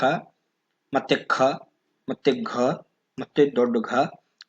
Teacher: ಗಂಟಲಿನ ಸಹಾಯದಿಂದ ಹುಟ್ಟಿರತಕ್ಕಂತ ಅಕ್ಷರಗಳು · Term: ಕಂಠ್ಯ ಅಕ್ಷರಗಳು